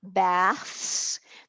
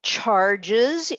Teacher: the s in both of those words can respectively say s and z